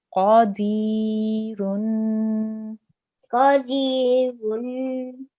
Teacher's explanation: we have a ra with a tanween of dhamma again. So we have to make a nasal sound.